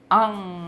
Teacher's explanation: 우리가 코를 이렇게 막고 앙 하면은 코가 울려요. 그래서 코가 울린 소리를 우리가 비음이라고 해요.